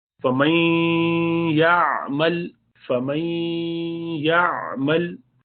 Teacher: بس فَمَن میں ذرا غنہ، ناک میں آواز گھمائیے، اس کو چھپائیے مت، یعنی فَمَن يَعْمَلْ کہنا غلط ہوگا، فَمَن يَعْمَلْ نہیں، فَمَن، دیکھیں ناک میں آواز آنی چاہیے، فَمَن يَعْمَلْ، فَمَن يَعْمَلْ۔